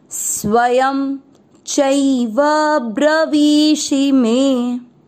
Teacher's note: ब्र, वी की मात्रा बड़ी लंबा खींचेंगे, ब्रवी, और शी की मात्रा छोटी। मात्राओं का विशेष ध्यान रखते हुए वी को खींचना है, शी को नहीं, ब्रवीषि में।